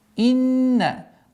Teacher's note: Удержание назализация в размере двух огласовок. Да. Долгота в размере двух огласовок.